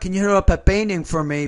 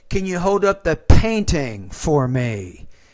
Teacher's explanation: you need to pronounce that pee with more air